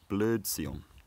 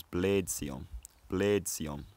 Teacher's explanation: northern old english preserves this older er sound where southern old english has unrounded it to a